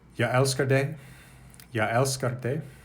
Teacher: Swedish has developed a glide, a y sound at the beginning of the word for I